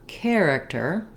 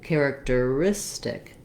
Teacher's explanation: The stress changes from character, long, short, to characteristic, where my length and my stress is really on the second to last syllable